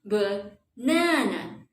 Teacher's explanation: The stress on the second syllable. So the second syllable will be longer, louder, and a little bit higher.